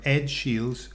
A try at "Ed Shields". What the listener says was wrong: Sonaba como Edge Shields, pero Ed.